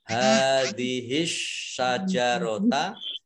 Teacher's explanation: Kemudian alif lam asy-syajarota, alif lamnya alif lam syamsiyah tidak dibaca, langsung masuk ke huruf berikutnya yaitu shin, ditandai dengan ada tasdid, shinnya dibaca double.